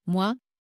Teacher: Ce n'est pas moi séparé, c'est un mouvement fluide de O vers A. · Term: diphtongue